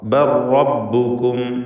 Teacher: സാക്കിനത്തായ ലാമിന് ശേഷമുള്ള റായിൽ പൂർണ്ണമായും ലയിപ്പിച്ച് റായിനെ മാത്രം ഉച്ചരിക്കുക. ഷദ്ദുള്ള റാ.